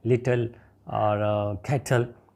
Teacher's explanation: इसको हम syllabic consonant कहते हैं कि अपने इसका सिलेबल काउंट होता है, लेकिन वावल साउंड वहाँ पे नहीं होती